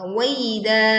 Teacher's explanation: Waida, da-nya dibaca panjang 2 harokat.